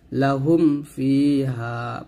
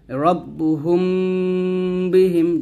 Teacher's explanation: যদি মিম সাকিনের পর বা আসে তাহলে অবশ্যই সে এখানে গুণ আদায় করেই পড়তে হবে